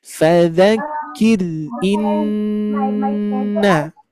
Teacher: idgham bi gunnah disertai dengungan. Maka Bapak Ibu sekalian harus mendengungkan di sini.